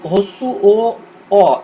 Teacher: উচ্চারণের সময় জিভটা পিছিয়ে যাচ্ছে, দেখো পিছনের দিকে চলে যাচ্ছে আমাদের মুখের ভিতর। তো সেই কারণে এই মৌলিক স্বরবর্ণগুলোকে পশ্চাৎ স্বরধ্বনি বলা হচ্ছে।